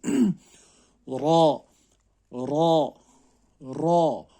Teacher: زبان کے کناروں کو سائڈ کے دھاڑوں کے لگانے سے ادا ہوتا ہے.